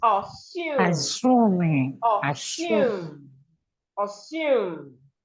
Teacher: So the second syllable is stressed, not the first syllable.